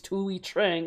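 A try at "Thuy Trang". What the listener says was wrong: No, you said Tui. It's Tweet. It's Tweet. Say Tweet.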